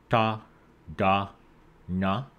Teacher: alveolar Ridge this position is called retroflex in retroflex sounds your your tongue curls a little bit as it makes contact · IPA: ɖ